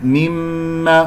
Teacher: مرت معنا ميم غنة مشددة، غنة كمل ما تكون